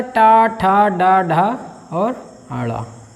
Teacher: जो मुंह के भीतरी छत का अगला जो हिस्सा होता है वह इसका उच्चारण स्थान होता है, इसलिए इसको मूर्धन्य वर्ण कहा जाता है